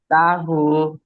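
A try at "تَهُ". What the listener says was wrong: আরো তাড়াতাড়ি করেন না, তার তাড়াতাড়ি। তা এত দেরি করে নিচ্ছেন, সময় নিচ্ছেন কেন? তাহু। হ্যাঁ বলেন, খালি উচ্চারণ করেই পরে হু উচ্চারণ করেন। তাহু। তাহু, একটু তাড়াহুড়া করেন। তাহু, এটা একটা ঢেউ দেন না।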